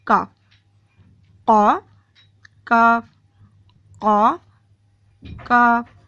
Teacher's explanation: قاف کے مخرج سے تھوڑا سا منہ کی طرف آتے ہیں تو کاف